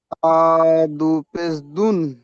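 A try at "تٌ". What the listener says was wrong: আবার দুন বলছেন, তা দু পেশ দুন বলছেন। তা দু পেশ দুন হবে না, দেখেন তা কোথায় আর দুন কোথায়? তা, দা, তা থেকে তুন হবে, তা থেকে তিন হবে, তা থেকে তান হবে, তা থেকে তা হবে, তা থেকে তি হবে, তু হবে। কোথায় তা আর কোথায় দা চলে যাচ্ছে?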